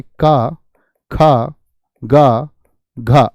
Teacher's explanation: स्पर्शी व्यंजन है, जीभ का सिर्फ स्पर्श मात्र होता है।